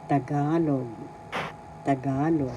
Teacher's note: First syllable ta, second syllable ga, third syllable log. The accent is in the second syllable ga.